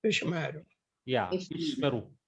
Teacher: But you have to give short Segal sound. Segal gives E sound. E sound. So you have to make it as short as possible. It is a short sound.